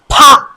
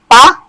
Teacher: ওই ফা উচ্চারণের সময় একটু জোরে বাতাস বের হবে দুই ঠোঁট ভালো করে ক্লোজ করে তাই একটা জোরে নিঃশ্বাসের সাথে ফা এটা বের হবে আমরা মূলত